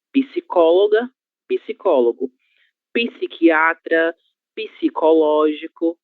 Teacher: Mas a letra P, seguida da letra S, deverá ser pronunciada. Como se houvesse a letra I no meio dessas duas consoantes.